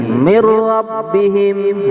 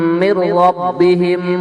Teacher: kalau idgham bila gunah seakan-akan nunnya tidak ada gitu